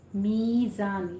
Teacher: ज़ाय के ऊपर आपने सीटी की आवाज़ लेकर आनी है।